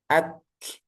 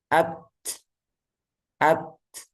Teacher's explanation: Ak baru dilepas Nah itu udaranya yang sisanya itu udara ya jadi hamasnya di Kaf sama ta itu di terakhir atau di ujung ak jadi tertahan dulu suaranya at macet baru dilepas itu hamesnya